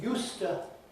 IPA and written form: ˈjuːstə (used to)